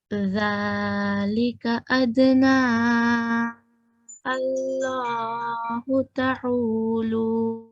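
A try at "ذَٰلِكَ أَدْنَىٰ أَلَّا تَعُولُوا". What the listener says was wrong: अल्लाह हो तो नहीं है यहाँ,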